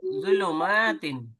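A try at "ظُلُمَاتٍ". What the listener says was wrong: जू नहीं बोलेंगे, जा का साउंड नहीं निकालेंगे। जबान को रखिए अपने दांतों के ऊपर के दांतों के किनारे पे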